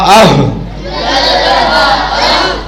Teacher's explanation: یہ جو ہا ہے یہ سینے سے نکلتی ہے